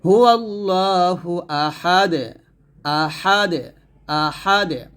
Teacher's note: [music] লিব্বিহিলা এখানে একটা বিষয় সেটা হচ্ছে যেহেতু দাল আসছে তো অকফের অবস্থায় দাল থাকলে সে হরফটা যখন সাকিন হয়ে যায় তখন কল কল আদায় করতে হয় · জের পেশের মত যেমন হু আল্লাহু আহাদুন আছে যদি থামেন তাহলে দলটা সাকিন হবে এবং কি করতে হবে কলকল করতে হবে দুই পেশ থাকার কারণে